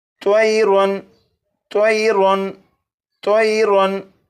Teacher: तनवीन के बाद हमज़ा है और हमज़ा हरूफ़ हल्की में से है, इसलिए तनवीन पर गुन्ना नहीं करेंगे